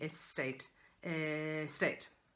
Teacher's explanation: The S and T come in together at the beginning of Tate, really.